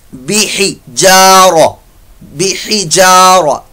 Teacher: हा हलक के दरमियान वाले हिस्से से अदा होगा, बूटम पार्ट ऑफ मिडल।